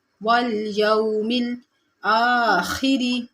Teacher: والیوم میں واو لین ہے، نرمی اور جلدی سے پڑھیں گے